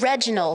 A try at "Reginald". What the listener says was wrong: You have to roll your R's. It's Reginald.